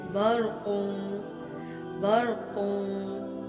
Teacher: را ساکن ہے، اس صورت میں بھی را موٹی پڑی گئی ہے